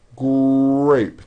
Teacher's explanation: the R sound is the strongest sound of the blend, and your lips often come forward before you even say the word. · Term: R blends